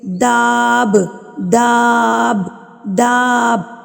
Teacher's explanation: آپ نے نا داب دا کو لمبا کر کے با پہ اینڈنگ کرنی